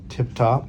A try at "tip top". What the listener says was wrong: Slight slur still off the S's and the T's.